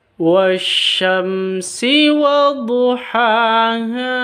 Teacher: Jadi dibaca langsung masuk ke shin, alif lamnya dianggap tidak ada, wash langsung masuk ke sinnya. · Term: alif lam syamsiyah